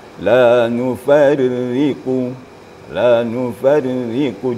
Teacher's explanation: Ra apabila tarqiq, apabila baris bawah maka sifatnya tarqiq, tipis. Setipis mungkin. La nufarriqu, la nufarriqu, di bibir kita agak ke bawah sedikit, ri gitu ya.